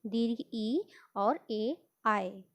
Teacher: अग्र स्वर, यानी जीभ की आगे की पोजीशन जो होती है वहाँ से उच्चारित होने वाले स्वर